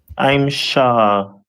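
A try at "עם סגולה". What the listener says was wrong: So that letter, the first letter after I'm is Sa, as opposed to Shah.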